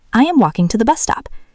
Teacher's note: Notice the pronunciation of walking. The L is silent.